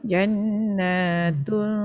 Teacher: Panjang. Na dua harakat, ada alif kecil tu.